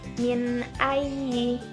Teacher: Contoh lainnya yaitu min ayyi, nun mati bertemu dengan alif dibaca jelas tanpa ada mendengung sama sekali. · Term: idhar